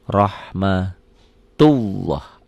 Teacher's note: Lafaz Allahnya dibaca tebal karena barisnya di atas